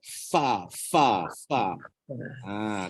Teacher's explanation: jangan pakai dua bibir kena pakai gigi dan bibir gigi gigi pun kena betul pernah dulu saya mengajar kata apa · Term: huruf Fa